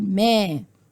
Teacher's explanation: ما ألف مد طبيعي حركتين مفتوح ما قبلها